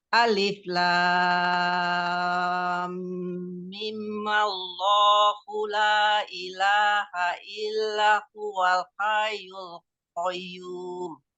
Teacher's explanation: Jadi mimnya 2 harokat, maullah langsung. Jadi bukan mim maullah, tapi mi maullah. Mi aja, nggak pakai mim.